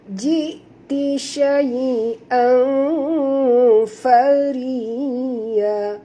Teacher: Maka kita kena sembunyikan bunyi tanwin ke dalam huruf fa, disertai dengung 2 harakat, ikhfa haqiqi.